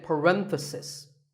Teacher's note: If you talk about just one bracket, you say parenthesis. The stress is on ren.